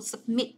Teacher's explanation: mình nhấn vào âm thứ hai